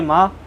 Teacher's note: माँ बोलने में होठ टच हो रहे हैं, बा बोलने में भी होठ टच हो रहे हैं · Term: ओष्ठ्य वर्ण